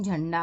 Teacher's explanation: अनुस्वार के बाद ड वर्ण है जो कि ट वर्ग का है और ट वर्ग का पंचम वर्ण होता है ण, इसलिए अनुस्वार जो है ण में परिवर्तित हो गया है